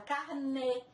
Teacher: acento circunflexo, que nós podemos ver na palavra carnê, que tem o som mais fechado